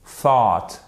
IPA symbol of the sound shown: θ